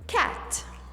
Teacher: It's very close to A. A, you open the mouth to say A, but you end up saying E